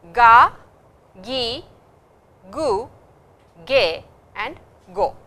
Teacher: the G sound, which is a slightly nasal sound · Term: ga set